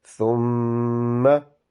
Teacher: So the sound of meme will prolongate because there is a shadda with a fatha. So you will keep your lips closed and then prolongate the sound of meme.